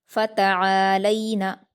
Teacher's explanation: تا پر حرکتیں جلدی پڑھیں گے. عین پر الف مدہ ہے، 2 حرکات کھینچ کر پڑھیں گے، حلق سے ادا کریں گے. لام پر یائلین ہے، نرم آواز سے جلدی پڑھیں گے.